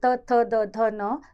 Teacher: आप ध्यान से अगर खुद भी बोल के देखेंगे त थ द ध न, तो हमारी जीवा दांतों से टकराती है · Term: दंत्य